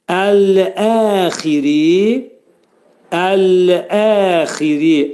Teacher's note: Qalın hərfdir. Ri dedikdə ra hərfi burada incə oxunacaq. Çünki ra hərfindən sonra kəsrə gəlir. · Xa hərfi boğazın, boğazın yuxarısından çıxarılacaq. Qalın hərfdir. Ri dedikdə ra hərfi burada incə oxunacaq.